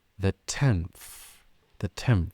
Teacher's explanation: substituting the th with an F